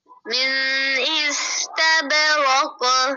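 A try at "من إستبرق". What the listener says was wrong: फिर आपने थोड़ा सा गुन्ना कर दिया है, बड़े मिन इस्तबराको तब बा पर कलकला भी करे। मिन इस्तबराको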